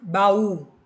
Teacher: o u é a sílaba mais forte, por isso que ele recebeu o acento. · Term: tônicos